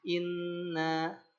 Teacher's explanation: Alkisyum itu rongga hidung. Makanya gunah itu suaranya dengungkan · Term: nun tasdid